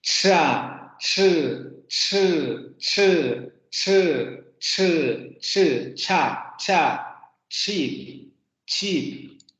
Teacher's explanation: La lengua sube hacia la parte de los postalveolos, ahí es donde se va a producir la oclusión y la fricación. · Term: postalveolar africano